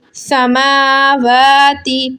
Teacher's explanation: واو کھڑا زبر وا, سما وا. دیکھیں دو کھڑا زبر ایک جگہ آ رہے ہیں تو آپ نے دونوں کو ایک ایک الف کے مقدار کھینچنا ہے کہ جتنی دیر میں آپ اپنی بند مٹھی میں سے ایک انگلی کو کھولیں اتنی دیر آپ نے اس کو کھینچنا ہے.